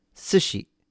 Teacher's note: the pitch accent is high to low. S is a higher pitch and then the mora she is a lower pitch.